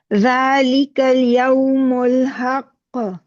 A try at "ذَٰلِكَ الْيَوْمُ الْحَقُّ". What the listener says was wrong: ذرا زور سے دبا کے قاف کو کلکلا کیجیے.